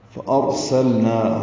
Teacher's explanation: نا الف مدہ ہے، 2 حرکات لمبا کریں گے · حمزہ کو را سے ملائیں گے، را پر پڑھیں گے، سین کو لام سے ملائیں گے ، لام ساکن پہ اظہار ہے، نا الف مدہ ہے، 2